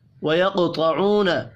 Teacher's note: قاف ساکن پر قلقلہ کریں گے. قاف اور طا حروف مستعلیہ ہیں, پر بھی پڑھے جائیں گے.